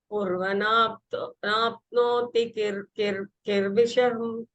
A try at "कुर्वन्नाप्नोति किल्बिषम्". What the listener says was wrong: Kurvan, because there are two in, right? Kurvannapnoti kilbisham.